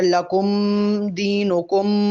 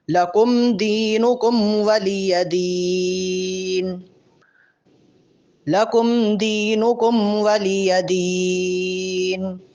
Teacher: لکم اور دینکم پر میم ظاہر کریں گے لیکن لمبا غنہ نہیں ہوگا۔ اگر لکم دینکم ایسے پڑھیں گے تو یہ غلط ہوگا، ان دونوں میم پر غنہ نہیں ہے۔